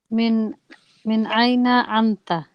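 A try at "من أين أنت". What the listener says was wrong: Very good. Excellent.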